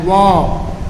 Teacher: दंतोष्ठ से 1 अंतस्थ व्यंजन वर्ण का उच्चारण होता है, व